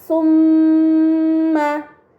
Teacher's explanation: terdapat mim bertasdid ini dinamakan gunnah maka harus dibaca dengan gunnah yang dipanjangkan